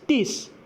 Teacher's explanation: Dental fricatives are often not enunciated in Manglish the way it is in standard varieties of English. Instead, they are pronounced as plosives. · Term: dental plosives